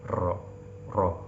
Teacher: Kalau ro bahasa Arab getarannya tidak terlalu jauh, ro, tidak ro, ya. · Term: takrir